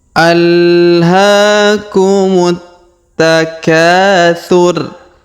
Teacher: alhaakumut Ta Ya ditahan dan ditekan di sini ya kumut takatur huruf k kita panjangkan dua harakat karena di depan huruf k terdapat Alif